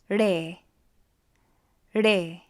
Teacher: This is a harder R sound. It almost sounds like a D sound.